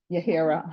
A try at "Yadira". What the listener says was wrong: Yadira, the H is silent. Yadira. There's no H, Judge. You only what, you see it, but it's not there.